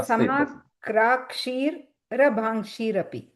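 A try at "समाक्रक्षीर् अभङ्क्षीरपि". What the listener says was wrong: Yeah, krakshir, you put a ir there to break that ra. So samakrakshir abhangshirapi.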